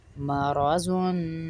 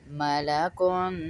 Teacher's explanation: مرا نہیں پڑھ رہے را کو پر پڑھیں گے اور موٹا کر کے پڑھیں گے